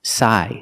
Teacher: remember that p is silent so we start with the S sound